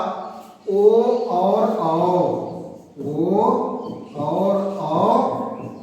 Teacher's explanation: ओ और औ का उच्चारण स्थान है कंठोष्ठ, कंठोष्ठ अर्थात कंठ और ओष्ठ से होता है ओ और औ का उच्चारण